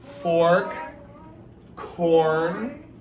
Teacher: It's kind of like long O with the R combined. We say it together. It makes one sound. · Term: R controlled